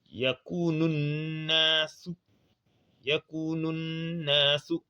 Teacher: le wa sert à tirer, on tire de deux temps. Nous, et on réunit le nous avec na, avec shadda.